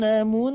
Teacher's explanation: idgham bil gunnah ini termasuk pada tingkatan gunnah akmal atau gunnah yang harus ditahan sepanjang 4 ketukan.